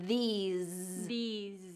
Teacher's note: that was Good Vibration that was a good strong z sound in there